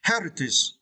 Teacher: you need to stress the first syllable